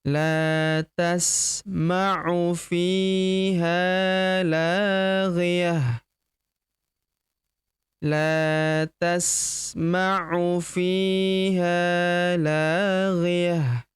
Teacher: ta marbutah di ujung berubah menjadi ha sukun ya. Karena kita hentikan bacaan kita di sini ya.